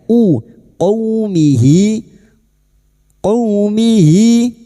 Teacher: fathah bertemu waw sukun huruf lin kita lunakkan seperti bertemu dengan huruf abjad u. Jangan o ya.